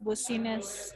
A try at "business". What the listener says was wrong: Bukan Busines dong. Busines itu tetanggamu Busines. Ini bacanya bisnis ya. Bisnis bacanya bukan Busines. Jadi yang perlu diperbaiki bacanya adalah kata bisnis ya.